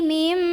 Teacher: Berikutnya ada iklab karena ada nun sukun bertemu dengan huruf ba, maka nun sukun diganti bunyinya jadi bunyi mim sukun, jadi bukan min tapi mim dan dengungkan, tahan.